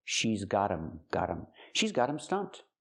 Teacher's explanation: The T is a fast D because phonetically it's between vowels.